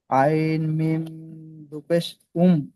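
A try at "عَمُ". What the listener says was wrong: দু পেশ হবে না, পেশ, শুধু পেশ, আইন মিম পেশ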